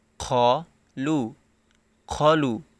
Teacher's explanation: এখানে অনেকে খলু এর জায়গায় খালু বলে ফেলে, মানে খয়ের উচ্চারণটা খ না বলে খা বলে, মানে খ জবর খ হয় কিন্তু এখানে অনেকে খা বলে ফেলে, যার কারণে খালু উচ্চারণ করে।